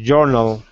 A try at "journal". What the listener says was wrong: Journal. Think of it like this. Journal. And journal. Don't lose your J when you're reading. Your J was sounding like a Y a little bit, like in the urinal almost. Not quite, but a little bit. So just don't lose your J sound. Journal.